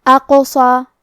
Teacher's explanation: کلمت اقصا میں حرف القاف پہ جزم ہے، تو یہاں قاف کا حکم ہے قلقلہ. قلقلہ کا معنی ہے حرف ساکن کو ہلانا، تو ہم حرف القاف کو ہلاتے ہوئے یہ کلمہ کو پڑھیں گے